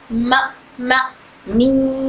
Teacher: दोनों होठ एक दूसरे से लाइटली टच होते हैं और नाक से भी आवाज निकलती है। यह नरमी से अदा होने वाले हर्फ है। · दोनों होठों के सूखे हिस्सों से अदा होता है मीम। दोनों होठों को मिलाकर अदा किया जाता है।